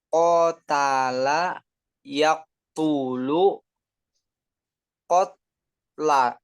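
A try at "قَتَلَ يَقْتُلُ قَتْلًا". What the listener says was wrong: Betul.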